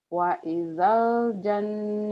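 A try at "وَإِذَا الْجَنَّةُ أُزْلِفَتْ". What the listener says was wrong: Wa idzal, jangan wa ijal, wa idzal. Wa idzal jannatu uzlifat.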